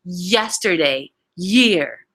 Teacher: These are known as palatal semi-vowel. And the Y sound is a form of a glide.